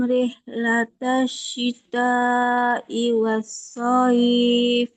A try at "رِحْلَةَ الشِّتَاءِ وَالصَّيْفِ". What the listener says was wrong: Nah, syitanya kurang panjang. Sebentar, syitanya ini kurang panjang. Ini mat apa, Mbak? Masih pada ingat? Mat? Iya, mat wajib muttasil. Iya, jadi panjangnya berapa? 4 atau 5. Jadi dipanjangin lagi, kurang panjang sedikit lagi.